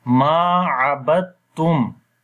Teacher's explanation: That's why ba we connect with the ta directly, and this dal we basically convert into ta for joining, and that will be abattum.